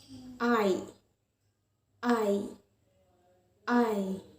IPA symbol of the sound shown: aɪ